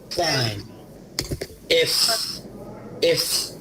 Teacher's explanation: আর এই যে এফ যেটা আছে দেখতে পাচ্ছেন, এটার সাউন্ড হবে আপনার দাঁত, উপরের দাঁত নিচের ঠোঁটে এসে হালকা করে প্রেস করবে, আর ঠোঁট দিয়ে একটু হালকা বাতাস বের হবে। এফ খুবই রিল্যাক্সেশনের সাথে করতে হবে এটা।